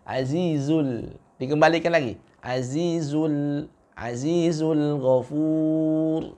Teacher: Wa huwal dengan azizul itu masih terbaca dengan tebal, ya. Karena huruf lam sejatinya tipis, al-istifal, maka dia terbaca dengan tidak menebalkan suaranya.